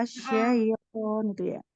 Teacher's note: kita tunaikan huruf ya-nya itu dia punya sifat rokhawahnya. Mengalir suaranya kan sempurna.